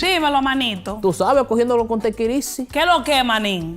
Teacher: They speak so fast they leave huge chunks out of their words, and yet the vowels are actually really clear.